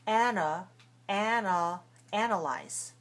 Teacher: the second one is weak the second one is a schwa